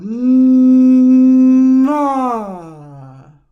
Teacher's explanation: The M is longer, right? When we are feeling the full vibration.